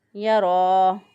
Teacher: یرا اس کو ایک الف کے برابر صرف لمبا کریں گے، زیادہ لمبا نہیں کریں گے